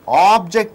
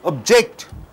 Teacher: When you stress j it becomes verb. When you stress ob it becomes noun.